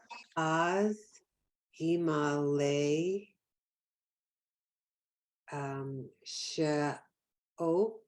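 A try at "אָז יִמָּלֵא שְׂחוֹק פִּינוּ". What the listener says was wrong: This has the dot on the other side. See, sheer here has the dot on this side. Sechok. Sechok. Pinu. Remember the ooh in the middle of the body is like punching you in the stomach. It's ooh, as opposed to the O head is O, right?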